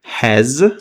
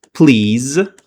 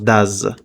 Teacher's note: Please z bilan talaffuz qilinadi yoki bo'lmasam does z bilan talaffuz qilinadi. S harfi yozilgani bilan z bilan talaffuz qilinishi kerak bo'ladi. Bu qachonki o'sha harfga urg'u tushganda yoki bo'lmasam ikkita unli o'rtasida kelganda shu narsa sodir bo'ladi.